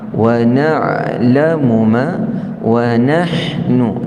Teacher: Adapun ha di sini keluar daripada pertengahan halkum sebagaimana kita sebut huruf Ain